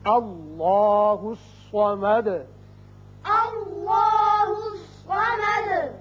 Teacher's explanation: اب دال کے اوپر پیش ہے، آیت ختم ہونے کی وجہ ساکن کریں گے اور سکون کی وجہ سے صفت قلقلہ ادا ہوگی